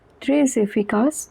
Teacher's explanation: Efficace begins with a vowel, so the S at the end of très is also pronounced. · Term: liaison